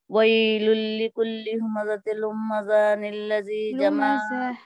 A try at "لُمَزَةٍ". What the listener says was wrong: لمزة نہیں, کیوں میم پہ کیوں تشدید دے رہے؟ لمزة.